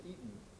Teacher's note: you lose the distinction in fact between eating and eaten they both come out the same